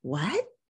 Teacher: what means, what did you say? And so it has a rising intonation.